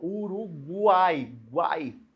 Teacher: Só que o GU não é um dígrafo aí, né? Porque eu pronuncio o U. O G e o U, ó. · O U, semivogal. O A, vogal. E o I, outra semivogal aparecendo. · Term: tritongo